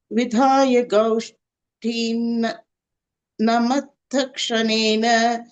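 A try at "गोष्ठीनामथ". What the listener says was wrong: atha. So you break it. Gaushthinam tha. Gaushthinam atha. When you keep saying that matha will come. Gaushthinam atha.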